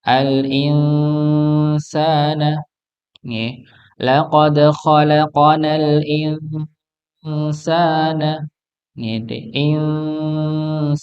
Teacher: ada nun ketemu dengan sin dari kata al-insan. Maka disamarkan.